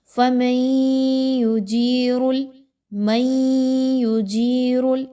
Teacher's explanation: نون ساکن کے بعد یا کا حرف ہے تو یہاں پہ آپ نے ادغام مع الغنہ کرنا ہے، یعنی کہ میم کو آپ نے یا کے ساتھ ملانا ہے تھوڑے سا غنہ کرتے ہوئے۔